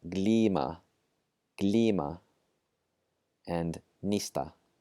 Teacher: hold it for extra long in that first word and short in the second